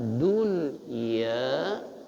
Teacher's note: La'allakum tatafakkaruna fid asamsiyah dun ya dunianya idhar. Nun sukun ketemu ya dalam satu suku kata nggak bisa dipisah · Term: izhar